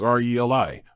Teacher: the correct pronunciation of relay is RELI, with the emphasis on the first syllable